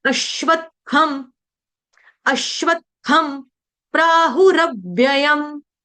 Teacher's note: थ के ऊपर जो अनुस्वार उसका उच्चारण करेंगे हम हलंत म के साथ। क्यों? क्योंकि आगे आ रहा है प वर्ण।